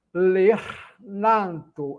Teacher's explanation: O n sai naturalmente sem o nasalizar